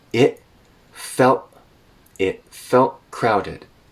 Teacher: So those T's in it felt turn into glottal stops.